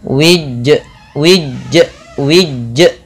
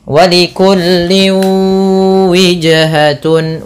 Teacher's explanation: Itu nambah hamzah. Harusnya tidak boleh tambah hamzah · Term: qalqalah